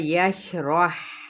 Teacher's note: ہا باریک اور ہمس کے ساتھ